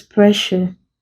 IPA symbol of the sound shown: ʃ